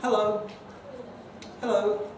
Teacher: it's perfectly okay to say that with a fall so long as you're using a sort of relatively high key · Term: default greeting